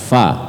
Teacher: Fa, mempertemukan gigi seri atas dengan bibir bawah. Fa. Maka ketika kita menyebut man, itu kita sudah siap-siap mempersiapkan gigi seri atas dan bibir bawah kita. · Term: huruf Fa, huruf fa